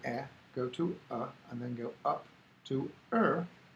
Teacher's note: you will actually start with air go to uh and then go up to earth where your tongue is going to be curling back the er is the interesting what i think is really exciting